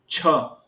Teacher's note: छ बोलते समय तालु का स्पर्श किया